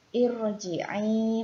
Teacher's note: Contohnya irji'i ya, di sini ada ra sukun sebelumnya ada hamzah wasol di awal kalimat ya. Irji'i, maka huruf ra-nya harus dibaca tafkhim